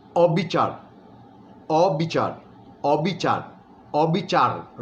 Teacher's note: যে কারণে আমরা অবিচার যখন উচ্চারণ করি, অটা ও এর মতোই থাকে ঠিক কথা, কিন্তু শেষের যে অক্ষরটি র, সেখানে একটা হসন্ত মনে মনে যোগ করি, একটা ছোট্ট করে ধাক্কা দিই। অবিচার, অবিচার, অবিচার, অবিচার, রটার মধ্যে একটা ধাক্কা দিয়ে ছেড়ে দিই।